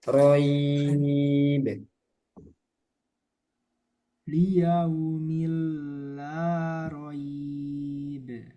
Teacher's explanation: Liyaumil la roib. Nah, kalau lin diwakaf menjadi mat lin, jadi panjang sedikit